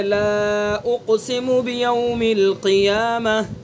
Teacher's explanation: وقف بالابدال ہوگا، چونکہ یہاں گول تا ہے تو گول تا پر ہم نے وقف کیا تو اس کو ہائے ساکنہ سے بدل دیا